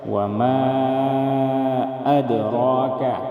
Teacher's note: وما مد منفصل کو ہم 4 الف کے برابر کھینچ کر پڑھیں گے